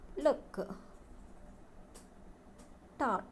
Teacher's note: Approximates are released through the side of the tongue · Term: Lateral